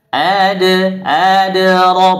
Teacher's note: huruf Dal sukun dibaca pantul Qalqalah sugro